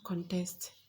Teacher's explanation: So contest is a verb, it will fall on the second syllable.